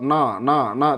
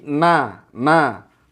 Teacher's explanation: kalau no no no tebal ya tapi na na pastikan benar-benar tipis ya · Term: fathah